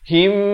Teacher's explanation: Tapi di sini mim mati bertemu mim. Hukumnya idgham mislain saghir dibacakan dengan kadar 2 harakat dengung.